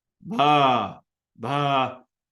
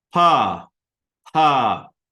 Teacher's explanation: there's a big buzz in the ones that are considered voiced versus voiceless